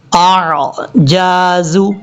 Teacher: دونوں کو کلیئر کر کے پڑھیں گے، حمزہ سختی کے ساتھ، عین نارمل طریقے سے